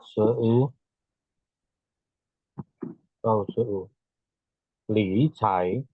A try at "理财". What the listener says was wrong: Ya, 3 ya. Li-nya turun. Li cai.